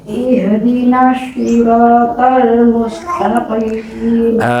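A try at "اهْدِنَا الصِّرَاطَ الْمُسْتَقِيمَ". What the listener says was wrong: Itu kok dekat dengan shin, ya. Berarti so semuanya sebenarnya coba kalau kita lihatan sin sa cuma nanti diiniin aja jadi jadi ini tidak dekat dengan shin. Kalau shin sha, jadi bukan sho, bukan, itu mirip dengan sin tapi ada ada sisi apa namanya?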